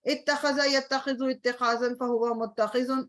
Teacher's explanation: notice that the hamza and the ta merged and became a ta with a shadda in all forms.